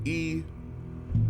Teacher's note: the high front unrounded vowel E